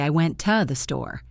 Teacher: We don't say the strong vowel sound. We say the schwa.